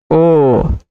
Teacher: ओ का उच्चारण स्थान कंठोष् कंठ और ओष्ठ जुड़ गया